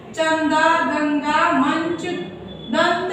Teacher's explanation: अनुस्वार किन्हें कहते हैं कि इनका उच्चारण केवल नाक से होता है